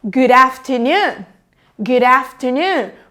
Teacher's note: Eu junto e ainda, como no inglês americano, o D e o T, eles soam como R.